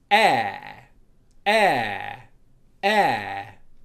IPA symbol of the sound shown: eə